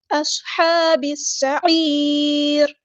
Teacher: را کو ہم وقف کرتے ہوئے ساکن کر دیں گے، اور را جو ہے وہ باریک پڑی جائے گی · عین کو مستحرک یعنی مڈل تھروٹ سے ادا کریں گے ، تا باریک پڑیں گے، اور را ہمارا ہیوی لیٹر ہے · لام یہاں پر لام شمس سے اس کو ظاہر نہیں کرنا